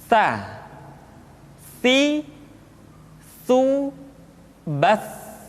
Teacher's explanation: Sa dikeluarkan dengan menyentuhkan ujung lidah kita dengan dinding dua gigi seri bagian atas. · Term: huruf sa